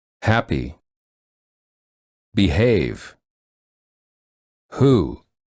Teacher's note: the back of the tongue is pushed against the throat to create friction as the air flows out from the back of the mouth.